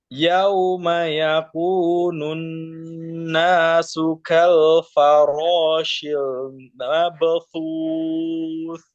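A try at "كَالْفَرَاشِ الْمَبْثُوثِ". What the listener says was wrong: Baknya masih tebal.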